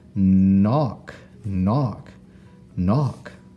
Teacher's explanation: has a silent K in the front. We don't hear that K. We just hear the N that comes after it. So K N gives us the sound knock.